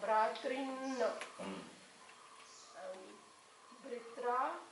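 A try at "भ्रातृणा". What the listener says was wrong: Why Britra? Only Bra only is Bhratra Shabda it is only. Bra only. Here Pitru, P. So you cannot change it.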